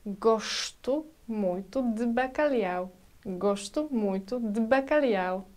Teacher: When we've got in European Portuguese letter S situated just before consonants like D, T or P, it sounds like sh.